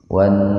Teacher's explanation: Jadi membacanya dimasukkan ke nun, lamnya diabaikan saja dengan mendengung. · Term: alif lam samsiyah gunnah